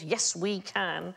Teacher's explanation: so that's three stressed syllables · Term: Molossus